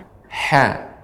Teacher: ha ini termasuk makhrajnya tengah tenggorokan. Memang kalau kita latihan huruf ha ini agak lumayan capek ya, karena memang bagian tengah sehingga suara tenggorokan kita agak lebih menyempit.